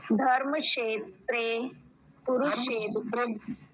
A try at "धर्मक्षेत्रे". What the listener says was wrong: नहीं रुकिए, धर्म क्षेत्र नहीं, धर्मक का भी आता है उसमें, धर्मक क्षेत्रे।